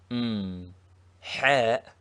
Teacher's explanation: is a heavy H from the back of the mouth